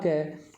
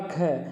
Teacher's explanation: क के बनिस्पत ख में हवा ज़्यादा निकल रही है, तो हमने क्या देखा कि क का अल्प प्राण ख है, इसी प्रकार से ग का अल्प प्राण घ हो जाएगा।